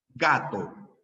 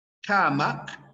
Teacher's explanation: corregí van ojo Ah este hay sonidos que nosotros producimos llamados sonidos velares es decir mira tu lengua retrocede y choca con el velo del paladar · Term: sonido velar